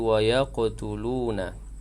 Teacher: qaf yang sukun qalqalah sughra berdetak kecil